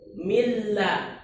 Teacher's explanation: Nunnya hilang, tinggal lamnya doang. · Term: idgham kamil